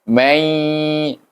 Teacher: Bunyinya mai 2 harakah. Ingat, 2 harakah, bukan lama. Mai kita panjang tak boleh, 2 harakah saja supaya bunyinya sedap sikit. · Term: gunnah